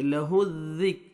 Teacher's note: وَأَنَّا لَهُ ہا پڑھیں گے، ہا میں مکس نہیں ہونا چاہیے آواز، لَهُ الذِّکْ زال کو نرمی سے ادا کریں گے، زا نہیں پڑھیں گے